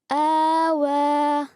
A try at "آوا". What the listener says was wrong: Good, آگے.